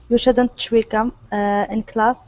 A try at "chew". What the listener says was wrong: Now this word here is pronounced chew. We end with that oo sound instead of chue. Okay, so it's just oo, chew. Okay, so that's chew.